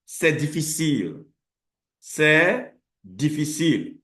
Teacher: Our emphasis, l'emphase dans cette phrase est sur le mot difficile. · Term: intonation assertive